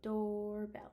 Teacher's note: the end of the word doorbell makes our tongue go up to the top of the roof of our mouth